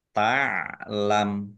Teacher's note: Mimnya dibaca sukun karena wakof dan dibaca pendek wakofnya karena tidak ada tanda panjangnya.